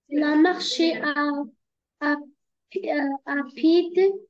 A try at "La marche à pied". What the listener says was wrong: La marche à pied, D. D, هذه, c'est une lettre muette. من تنطقيهاش. لا تنطق D. La marche à pied.